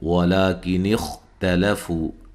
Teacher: خا کو موٹا ادا کرنا ہے، ہلانا نہیں ہے